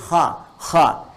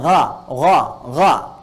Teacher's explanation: bagian pangkal lidah di paling ujung itu menyentuh ke langit-langit. Sehingga ketika dia ke atas, suaranya lebih tebal. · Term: isti'la